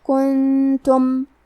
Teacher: کلمت کنتم میں نون ساکن ہے، پھر حرف تا ہے، یہاں حکم ہے اخفاء، تو ہم یہ حکم کو غنہ کے ساتھ ادا کریں گے